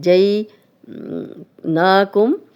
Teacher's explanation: کھڑا زبر ہے تو یہاں پہ ہم اس کو تھوڑا لمبا بھی کر رہے ہیں 2 حرکات